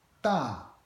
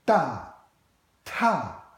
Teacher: in Chinese, both d and t are unvoiced. So there's no vibration of the Adam's apple. But there's a huge difference in aspiration.